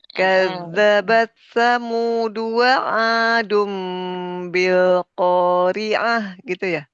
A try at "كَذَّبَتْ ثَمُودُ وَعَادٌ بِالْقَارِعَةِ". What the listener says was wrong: naik lagi. Turunkan.